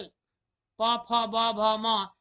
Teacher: इसका उच्चारण स्थान ओठ से होता है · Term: प वर्ग